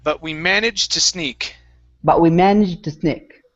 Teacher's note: we do not want to finish the D sound